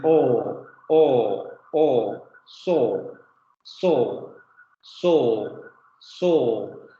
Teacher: Posterior semiabierta labializada